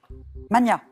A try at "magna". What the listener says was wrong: En français, on entend souvent mania, et en fait, on doit le prononcer comme pour Magnus. Donc c'est Magna, même si on l'entend moins, hein, mais voilà.